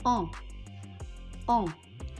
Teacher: kita mengucapkannya dengan cara mengeluarkan udara dari hidung. Ingat ya, udaranya keluar dari hidung, bukan dari yang lain. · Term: voyelle nasal